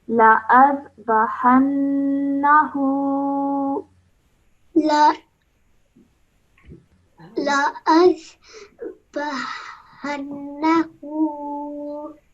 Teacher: Because noon has a shadda on it, we must produce a nasal sound for 2 seconds. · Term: gunna sound